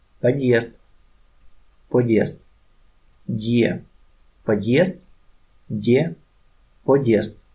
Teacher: Here is a vowel that makes a consonant soft, but we must read Дд solid because of Solid sign